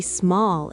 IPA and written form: smɔːl (small)